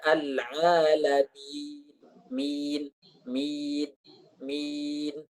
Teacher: Atau al-alamin, al-alamin, jangan dibaca al-a, jangan, tapi dibaca al-alamin, min. Mimnya masuk ke hidung, setelah itu huruf mannya tidak masuk ke hidung. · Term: gunnah